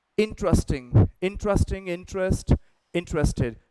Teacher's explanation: ये इन पे स्ट्रेस देना, फिर ट्र की ध्वनि आनी चाहिए